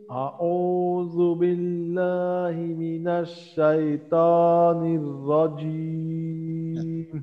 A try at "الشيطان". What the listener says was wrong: তটা আমরা একটু চেষ্টা করব, তটা যেন একটু মোটা হয়, হ্যাঁ। ত, হ্যাঁ, জিহ্বার গোড়াটা একটু উপরের দিকে উঠাবো আমরা, মাখরাজ ঠিক। হ্যাঁ, জিহ্বার আগা, সামনের উপরের দুই দাঁতের গোড়া, আমরা মাখরাজ ত এর মাখরাজ ঠিক রাখবো। দেখি জিহ্বার গোড়াটা একটু যদি উপরের দিকে উঠিয়ে দিই, ইনশাআল্লাহ মোটা হয়ে যাবে। أعوذ بالله من الشيطان الرجيم.